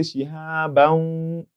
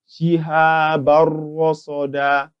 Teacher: the Nuun Saakinah is to be entered into the ra alongside with its ghunnah. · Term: idgham bi ghayri ghunnah